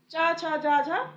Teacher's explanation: जब हम इनका उच्चारण करते हैं तो जो हमारी जीभ होती है, ये हमारे मुंह के तालु को स्पर्श करती है। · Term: तालव्य